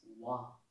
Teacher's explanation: it is only the two lips that are involved and not the teeth